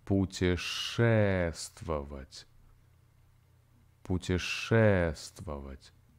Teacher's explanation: And the stress falls on the middle syllable.